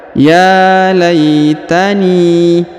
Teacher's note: huruf ni Huruf na harakat I dibaca ni ya garis bawah dibaca ni dipanjangkan dua harakat karena di depannya terdapat Ya Sukun